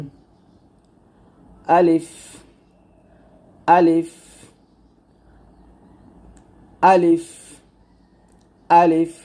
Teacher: মুখের খোলা জায়গা থেকে আমরা আলিফ উচ্চারণ করব